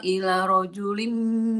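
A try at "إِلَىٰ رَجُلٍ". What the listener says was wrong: Ilanya panjang. Ila rojulim. Ilanya dua kali. Iya, ada kecil alifnya di situ.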